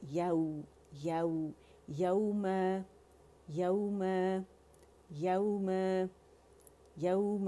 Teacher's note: میم پہ ضرور جانا ہے، ٹچ کرنا ہے دونوں ہونٹوں کے خشکے سے